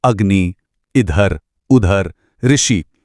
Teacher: आवाज में कोई खिंचाव नहीं है। बिल्कुल झटके से खत्म हो जाती है। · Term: ह्रस्व स्वर